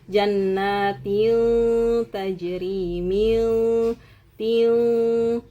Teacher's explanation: Jannatin tajri min tin. Nah, itu adalah bunyi nun bunyi tanwin yang samar. Jadi, jelas tidak dibaca tin, tidak jelas seperti tin dan tidak langsung dimasukkan ke janin misalkan ke ya, tidak, ke nun tidak, ke mim tidak, ke wau tidak. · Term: ikhfa